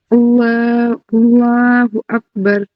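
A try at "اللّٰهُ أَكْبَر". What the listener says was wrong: کاف میں آپ کی تھوڑی ہمس نہیں آ رہی ہے.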